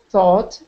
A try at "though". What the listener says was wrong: Okay, that's not thought. There's no T on the end. No, it's pronounced differently if there's no T on the end. That's low. Though.